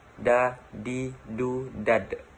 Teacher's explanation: Melafalkan huruf da dengan menyentuhkan ujung lidah kita ke gusi bagian atas dalam keadaan mati. Huruf da terdengar suaranya mantul.